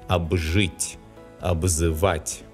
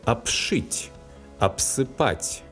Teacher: Before the voiced sounds Ж and З, the letter B specifies a voiced sound B.